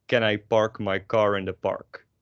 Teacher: if you want to make this very dutch then you would get rid of all your aspirations